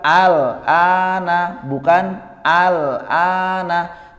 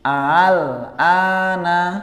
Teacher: Ya, jadi bukan al-ana, bukan al-ana, tapi hamzah yang kedua dibaca dengan tasil